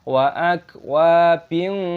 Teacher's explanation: kasr tanwin diikuti kaf, dibaca ikhfa, dengan penyembunyian